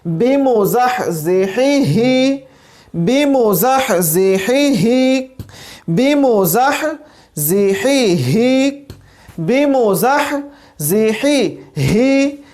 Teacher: آخری جو ہمارے پاس ہا ہے، اس کی آواز جو ہے وہ حلق کے آخری حصے سے آئے گی